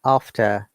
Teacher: As you can see in after, I have not pronounced the R because in after, R is the last word, last letter, and second, third, or the last letter of the word.